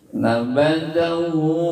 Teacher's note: nabadahu, hu-nya panjang 2 ketuk 2 harokat, itu mad sillah qasirah.